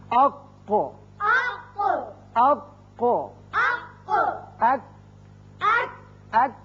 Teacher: زبان کا آخری حصہ قوے کی جو قریب ہے، جب اوپر تالو سے لگتا ہے تو ادا ہوتے ہیں۔ قوف پر کر کے پڑھتے ہیں، کاف ذرا ہٹ کر نیچے کی طرف سے نکلتا ہے اور باریک ہوتا ہے۔ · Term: قوے کے حروف